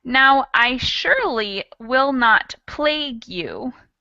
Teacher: surely, which just uses an S, but it sounds like an SH